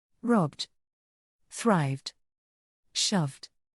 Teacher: if the Ed is preceded by a voiced consonant sound such as b or V it should be pronounced as a voice d